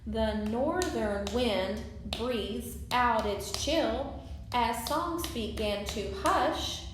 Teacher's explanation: when I wrote that hush, I put a little bit more emphasis on that than I did to or as.